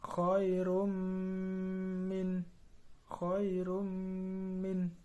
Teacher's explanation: Nomor 5 yaitu idgham bigunah, karena ada dhammah tanwin bertemu dengan huruf mim, cara membacanya masuk dengan mendengung